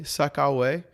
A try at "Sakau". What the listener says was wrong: Sakau. Yeah, all the vowels are short.